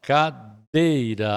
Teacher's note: A sílaba forte é o dei, é uma paroxítona. Paroxítona terminada em A, então não é acentuado.